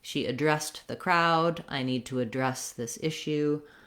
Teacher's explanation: she addressed the crowd i need to address this issue etc so when you're using it in action second syllable stress when you're using it to talk about a street address or · if i'm using it as a verb we have just the second syllable stress so she addressed the crowd i need to address this issue